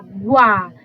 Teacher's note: Eu tô lendo linguagem, guá, G-U-A. Então, esse U é uma semivogal, eu coloco o W, depois o A.